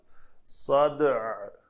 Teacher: دال کو قلقلہ اور عین ساکن کی آواز صدع، یہ جو عین وسط حلق سے آواز ہے وہ ساکن آواز نکلنی چاہیے، صد کر کے چھوڑ دیں گے تو وہ عین کی ادائیگی نہ ہوئی۔